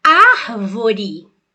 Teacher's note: se for a palavra árvore você vai ver que a sílaba tônica é ar · você vai ver que a sílaba tônica é ar. Então essa palavra é proparoxítona.